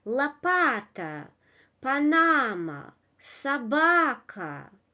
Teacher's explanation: Луна, вода, софа, сова, лото. A model built of three syllables and the middle syllable is stressed.